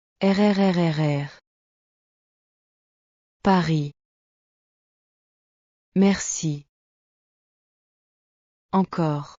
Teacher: En anglais, nous faisons le R avec la langue qui touche le palais. Mais en français, le R vient de la gorge. C'est un son guttural, comme quand tu te gargarises. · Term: Le son R français